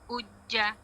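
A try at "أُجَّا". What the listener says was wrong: Uj. Dulu merasa kuat tekan. Uj. Bukan uja. Di jim, iya kurang kuat martinya kuat tekan. Hati-hati kita ikut yang ada hamzah dhammah, jim syaddah. Jadi jim syiddah dan jahar sifatnya dan syaddah. Oh, jahar dan hamas double. Jadi daripada kita baca ay karena sukun, ay karena tasydid, lebih kuat.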